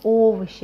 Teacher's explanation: because it is stressed, we pronounce it as о, as it is written